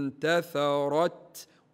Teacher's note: النون بعدها حرف التاء حكمها الاخفاء يعني نخفيه النون هذ مع غنه من الخيشوم تقرا الكلمه انتثرت ولا ننسى